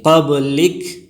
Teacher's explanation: وقف کی حالت میں قبلک کے کاف کو ساکن کریں گے